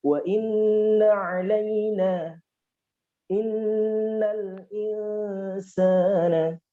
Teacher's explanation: Sifat dengung yang ada di huruf mim, ada pada huruf nun.